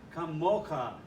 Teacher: The accent is on the second syllable, the mo syllable